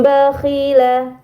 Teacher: sini ada nun sukun bertemu huruf ba ini dinamakan iqlab maka Nun sukunnya dibaca mim dengan gunah yang dipanjangkan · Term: iklab